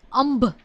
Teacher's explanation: તો અંભ જે શબ્દ છે એમાં ઓષ્ઠ્ય અનુનાસિક છે. મ લિપિ ચિહ્નથી આપણે એને દર્શાવીએ છીએ.